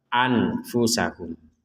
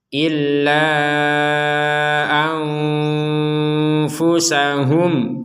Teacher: menjadi lima ataupun en Har illa anfusahum Nah di sini ada nun sukun bertemu dengan Fa kita membacanya dengan samar Jangan dibaca jelas